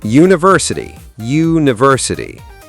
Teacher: It starts with a U sound, which is actually a consonant sound. It's like saying you. So even though U is a vowel letter, You say a university, not an university.